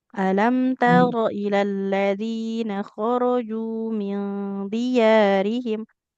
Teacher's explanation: ro-nya nggak boleh panjang. Fathah tidak bertemu alif.